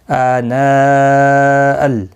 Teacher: لیسوا سواء من اہل الکتاب امۃ قائمۃ یتلون امۃ قائمۃ یتلون آیات اللہ آناء حمزہ کے اوپر کھڑی زبر ہے اور پھر مد متصل ہے، 4 الف کی مقدار کے برابر کھینچ کر پڑھیں گے، اس کو 1 الف کی مقدار کے برابر کھینچ کر پڑھیں گے حمزہ کو۔